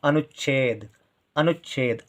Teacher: कम देर के लिए आवाज आ रही है चा की, अनुच, अनुच है बहुत कम देर के चा की आवाज आ रही है और तुरंत छा की आवाज आ जाती है